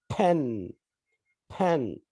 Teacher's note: We stop the air and then release it suddenly, producing or pushing air from the lips.